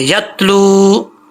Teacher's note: لام کے آگے واو ہے, واو مدہ لمبا کریں گے